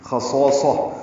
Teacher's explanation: خا پر ہے موٹا پڑھیں گے، صاد پر ہے موٹا پڑھیں گے